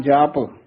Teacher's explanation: ਇਹ ਵੀ ਕਈ ਜਪ ਕਸ ਕੇ ਬੋਲ ਜਾਂਦੇ ਹਨ ਉਚਾਰਨ ਪੋਲਾ ਹੀ ਕਰਨਾ